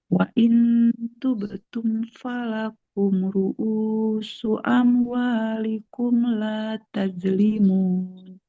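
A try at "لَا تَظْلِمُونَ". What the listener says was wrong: Gak boleh la tajlimun. La tazlimun. Huruf zo kan dia mengalir ya suaranya. La tazlimuna wa la tuzlamun.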